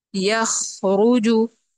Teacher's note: اب اس میں صرف خا میں ہمس ہے ، یخرجو، خا، یخ، یہاں پہ ہمس ہو رہا ہے، یعنی